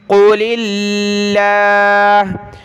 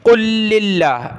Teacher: لفظ اللہ کو باریک پڑھنا ہے، قاف کو موٹا کریں گے،